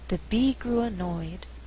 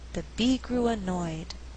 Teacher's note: this sentence we have three content Words Be grew annoyed but I choose not to stress grew so that I have alternating stress the resulting rhythm is the be grew annoyed d one and